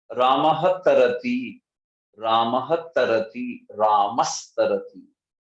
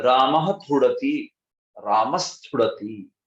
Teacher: विसर्ग की जगह सकार आ गया